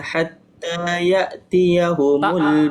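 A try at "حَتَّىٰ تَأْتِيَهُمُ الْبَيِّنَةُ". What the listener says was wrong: Bukan ya, misal. Tak.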